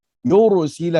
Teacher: ra pun tebal di sini mengikut baris yang sebelum ra. Yursila, jangan yursila.